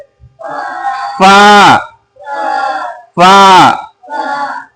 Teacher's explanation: थोड़ा सा गैप रखे ताकि हवा निकले तो फा अदा हो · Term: हवा निकलनी चाहिए